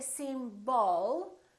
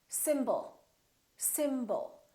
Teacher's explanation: the first syllable is stressed and the second syllable is reduced when we have a reduced vowel we don't pronounce it fully